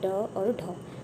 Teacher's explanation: जिनके उच्चारण के समय जीभ पहले ऊपर उठकर मूर्धा को स्पर्श करती है और फिर एकदम नीचे गिरती है, वे उत्सिप्त व्यंजन कहलाते हैं।